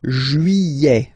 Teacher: Don't pronounce this final T, E-T here at the end. E. Juillet.